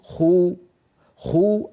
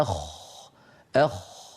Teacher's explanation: المضموم اكثر تفخيما من الساكن والساكن اكثر تفخيما من المكسور فجعل امامنا الجزري للحرف الساكن من